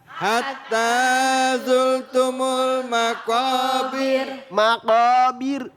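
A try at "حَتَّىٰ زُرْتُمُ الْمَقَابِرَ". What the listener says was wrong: Jangan bir begitu. Takrirnya cuma takrirnya enggak terlalu panjang ya. Terlalu panjang. Jadi di sini ini maqabir. Nah, berarti dibaca tar dibaca tip.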